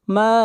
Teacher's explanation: ما کے اوپر مد متصل ہے، اس مد کو 3 الف کے برابر کھینچ کر پڑھا جائے گا